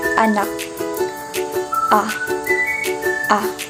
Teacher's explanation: Ito ay pababa at pasentral. Ito ay ang pinakabukas na tunog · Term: patinig na A